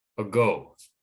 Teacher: They put stress on the second syllable. And so the first syllable moves from where it originally wasn't in the mouth into the center of the mouth, which is the more relaxed, unstressed position for pronouncing vowels in English.